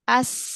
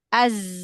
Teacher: ya kita sukunkan huruf sinnya kita pegang Bagian tenggorokan kita coba kita sukunkan huruf Sin as maka di tenggorokan kita tidak ada getaran sama sekali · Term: sifat Hames